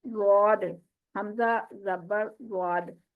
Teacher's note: ضاد جب آپ زبان کو کروٹ دلا کے اوپر داڑوں کی جڑ پہ لگائیں گے نا, تو آٹومیٹکلی جو آواز نکلے گی وہی اس کی ایگزیکٹ آواز ہوگی